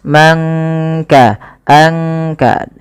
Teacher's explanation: Kemudian man kasaba, tidak kita baca man kasaba, tapi disamarkan suara nunnya kepada huruf kaf. Mangka, angka, langsung kepada makhraj daripada huruf kaf itu sendiri. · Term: ikhfa